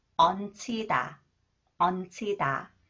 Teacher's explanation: And this one is when 히읗 comes after the final consonant 니은 지읒. 니은 지읒 combines with 히읗. It is pronounced as 치 sound.